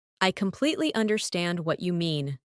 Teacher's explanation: Emphasize completely and understand.